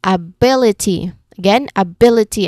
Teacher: Second syllable, li. Third syllable from the end, B. So our stressed syllable is B. So we say it as ability.